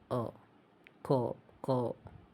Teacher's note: the pure O, less rounded than cold